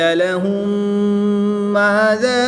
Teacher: میم ساکن کے بعد دوسری میم ہے تو یہاں پر ادغام شفوی ہوگا، یعنی غنہ کر کے پڑھیں گے